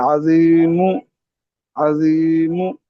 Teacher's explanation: हर्फ को पढ़ना तो साकिन ही है, मगर हम्म, होंठों को इस तरह गोल कर देना जिस तरह पेश अदा करते वक्त होते हैं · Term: इशमाम